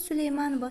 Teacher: Süleymanova sözündə ova şəkilçisi vurğu qəbul etmir